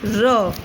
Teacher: Post alveolar, articulated by the tip of the tongue against the back of the teeth ridge